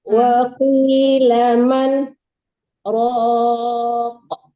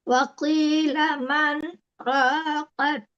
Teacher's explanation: Jadi kita berhenti sebentar tanpa melepaskan napas gitu. Iya. Itu namanya saktah.